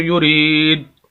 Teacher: اگر ہم بنا قلقلہ کے پڑھیں تو یورید دال کی آواز آگے ہلائیں گے نہیں, دال کی آواز آئے گی لیکن اس کو ہلانا نہیں ہوگا پھر. لیکن یہاں پر قلقلہ کریں گے, آواز کو ہلائیں گے.